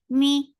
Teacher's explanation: for kasra, give e sound, and the sound is short